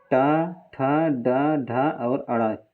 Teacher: ट को किससे बोलते हैं? मूर्धा से। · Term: ट वर्ग